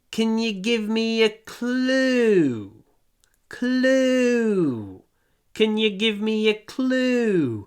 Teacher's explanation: Из-за того, что в конце предложения, несмотря на то, что это вопрос, мы опускаем голос.